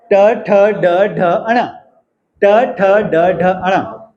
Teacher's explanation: टंग का lower part curl हो के अपर पैेट को टच कर रहा है। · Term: रिट्रोफ्लेक्स